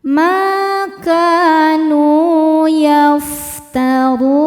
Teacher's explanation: Huruf ro dibaca secara tafkhim karena harakatnya di atas yaitu dommah. Cara bacanya d ditebalkan.